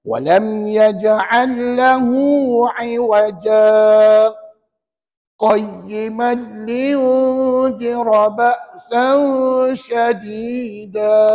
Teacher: Ja tu 2 harakat mad asli. Lepas tu baru kita sebut 2 harakat lagi untuk saktah.